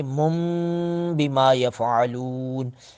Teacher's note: نون ساکن نون تنوین کے بعد بیما با آ گیا تو نون تنوین کو میم سے بدل کر من کو پڑھیں گے